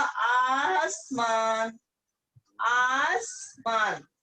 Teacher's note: अलीफ में आ जोड़ दिया, ये आ की मात्रा से मुख्तलिफ है, ये आ की मात्रा 3 बार लगेगी तब इसका मखरज अदा होगा। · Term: अलीफ में मद